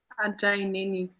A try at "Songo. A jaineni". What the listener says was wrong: Il faut descendre. Non, c'est pas Ajai, c'est A. Jaineni.